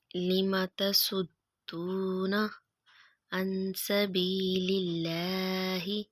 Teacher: لفظ اللہ کے لام کو باریک پڑھیں گے کیونکہ اللہ سے پہلے حرف کے نیچے زیر آ رہی ہے